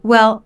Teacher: notice how the vowel is drawn out to sound like weel